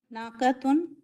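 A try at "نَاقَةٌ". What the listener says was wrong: नाखतुन है, खाफ को नहीं खींच रही हैं, वो अलीफ को भी प्रोनाउंस कर रहे हैं, वो हमजा नहीं है. नाखतुन, नाखतुन कैसे बोलते?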